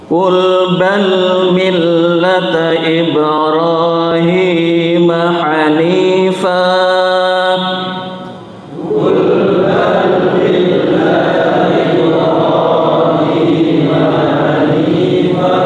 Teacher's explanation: Hanifan ini dibaca hanifah karena kalau diwakafkan adalah bacaan mad iwad. Jadi tetap dipanjangkan. Yang fathatain berubah cukup jadi fathah.